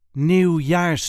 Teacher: There is a light emphasis on the second syllable.